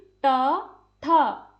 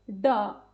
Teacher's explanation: जैसे कि ट, ठ बोलते समय जो जीभ है वो हमारे ऊपरी भाग को छू रही है, ड, ठीक है। उन्हें बोलते समय जीभ पीछे की ओर मुड़कर ऊपर टच हो रही है, ये हमारे मूर्धन्य व्यंजन है।